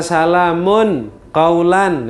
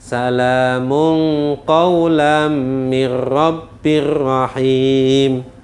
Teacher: tanwinnya disamarkan sehingga bunyinya Ang